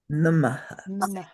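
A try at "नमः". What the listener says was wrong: So make that final h sound soft. Don't really say h, but sort of add a sound.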